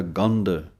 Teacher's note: ਗੰਧ ਬਿਨ, ਧਿਆਨ ਦੇਣਾ ਹੈ ਗੱਗੇ ਉੱਤੇ ਟਿੱਪੀ ਹੈ, ਧੱਦਾ ਹੈ, ਭਾਰਾ ਕਰਕੇ ਕੱਸ ਕੇ ਬੋਲਣਾ ਹੈ ਗੰਧ। ਜੇ ਪੋਲਾ ਬੋਲਾਂਗੇ ਤਾਂ ਦੱਦੇ ਦੀ ਆਵਾਜ਼ ਨਿਕਲਦੀ ਹੈ। ਧੱਦੇ ਦੀ ਆਵਾਜ਼ ਦੇਣ ਵਾਸਤੇ ਭਾਰਾ ਕਰਕੇ ਬੋਲਣਾ ਪਵੇਗਾ।